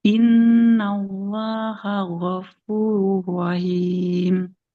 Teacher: Nah, huruf gin jangan jadi g ya.